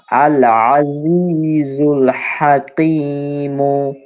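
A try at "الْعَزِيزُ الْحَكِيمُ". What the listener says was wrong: কাফটা আপনার কফ হয়ে গেছে, ক এরম পাতলা করে, আল আজিজুল হাকিমু।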